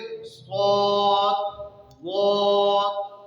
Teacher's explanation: 4 حروف میں اطباق پائے جانے کا مطلب یہ ہے کہ ان حروف کو ادا کرتے وقت زبان کا اکثر حصہ اوپر تالو سے لپٹ جاتا ہے، مل جاتا ہے، جس کی وجہ سے یہ حروف خوب موٹی آواز سے نکلتے ہیں